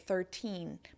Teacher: you'll notice that my mouth ends in the n position. You may not really hear a rolling n sound at the end · my mouth definitely forms the N at the end of the syllable